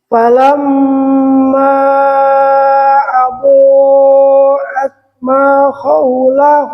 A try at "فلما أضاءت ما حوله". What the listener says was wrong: tidak haw tapi ha tipis. فلما أضاءت ما حوله